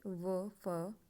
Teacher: निचले होठ व ऊपरी दांतों से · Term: दंतोष्टे